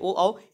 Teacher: ये कंठ जीभ और ओठ से बोले जाते हैं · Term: कंठोष्ठ